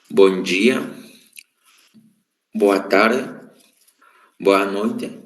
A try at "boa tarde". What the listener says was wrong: Boa tarde, ok? Faltou só o finalzinho aqui da nossa palavra, tarde, certo?